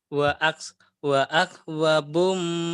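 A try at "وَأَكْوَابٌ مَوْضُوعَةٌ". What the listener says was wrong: wa akwa wanya panjang wanya panjang. Maudu'ah wa akwabum maudu'ah wa akwabum maudu'ah wa akwabum maudu'ah.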